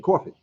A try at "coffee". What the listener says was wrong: Coffee. There's no R in coffee. Coffee. Coffee. Coffee. K-W.